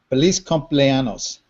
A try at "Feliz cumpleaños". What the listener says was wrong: No, don't say anos because that's a totally different thing without the enye. Accents are important.